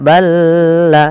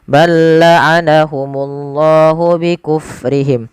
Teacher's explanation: Lam ketemu lam ada kita namakan dengan idgham mutamasilain ya mutamasilain yang di mana huruf lam yang pertama dimasukkan ke huruf yang kedua tapi tidak ditahan · huruf lam yang pertama dimasukkan ke huruf yang kedua tapi tidak ditahan, tidak balla, tapi langsung saja.